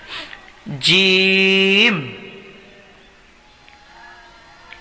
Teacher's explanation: জিমটা একটু শক্তভাবে উচ্চারিত হবে জিহ্বার মধ্যখান উপরের তালুর লাগাইলেই হয়ে যাবে